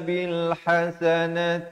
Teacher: kalau wakaf dia tukarkan kepada bunyi ha dan diberikan tanda mati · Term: tamarbutah